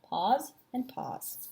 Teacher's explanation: So the actual three sounds that you hear in here are P, the short O, and Z.